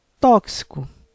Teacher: tóxico é uma palavra com três sílabas sendo que a sílaba mais forte é a antepenúltima